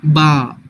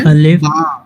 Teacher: اس میں میں نے بتایا ہے کہ ہم نے عربک میں، اردو میں ہم نے بے تے سے پڑھا ہوا ہے. عربک میں جو ورڈز ہم نے اے ساؤنڈ کے ساتھ پڑھے ہیں ان کو ہم نے آ ساؤنڈ کے ساتھ پڑھنا ہے